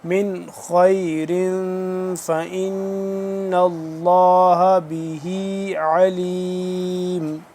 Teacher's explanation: لفظ اللہ سے پہلے زبر ہے، یہ زبر دیکھ رہے ہیں تو لفظ اللہ کو پر پڑھیں گے